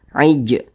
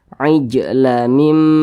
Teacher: Huruf jim termasuk salah satu daripada huruf qalqalah. Jadi apabila dia sukun dipantulkan. Jadi ini huruf jimnya sukun, maka kita pantulkan.